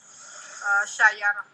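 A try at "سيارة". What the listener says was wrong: Sayyarah. Nah, ianya tasdid ya.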